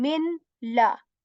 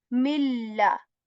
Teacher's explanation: I'm not saying min la. Milla. Joining mim with lam.